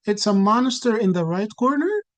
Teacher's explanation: In the second stage, we start to see some declarative word order without having the interrogative form of the question. So you might have like rising intonation at the end